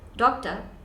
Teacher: it's doctor, no R in the end